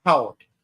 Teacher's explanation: Really, really emphasize that bilabial plosive right there.